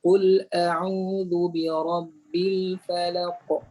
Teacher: Dalam 5 huruf qalqalah ni, huruf ta dan qaf adalah huruf isti'la. Menjadikan qalqalah dia qalqalah yang tebal.